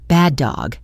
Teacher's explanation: We don't say bad a dog. We hold that first D sound for a fraction of a second and release it into the second D sound, making it one fluid motion.